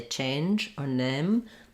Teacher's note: But in a word like changed or name, sometimes I'll hear people say change or name. They'll just do this first vowel instead of the diphthong.